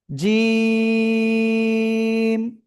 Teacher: শক্ত করে তিন আলিফ টেনে উচ্চারণ করব। · জিহ্বার মধ্যখান তার বরাবর উপরে তালুর সঙ্গে লাগিয়ে ১ ২ ৩ আলিফ টেনে পড়বো। আমরা শক্ত করে উচ্চারণ করতে হবে।